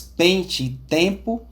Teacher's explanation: esse EN, que é meio nasal, bem nasal mesmo, como nas palavras pente e tempo